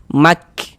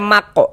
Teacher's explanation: Karena huruf kaf ini dia salah satu huruf yang memiliki sifat hamas. · Jangan dibaca mako, salah, mak. Jadi ada nafas yang mengalir seperti memercik.